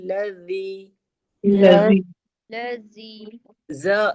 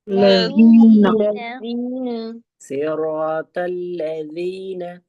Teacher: پھر یہاں ز نہیں ہے زال ہے. زال کو ہم بہت نرمی سے ادا کرتے ہیں اور کہاں سے ادا ہوتی ہے زال؟ زبان کی نوک اور دو دانتوں کے کنارے سے.